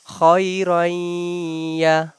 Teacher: We are doing idgham. We are merging ra into ya.